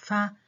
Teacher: And as you know, the vocal folds are held wide apart. During the production of fa, the vocal folds don't vibrate.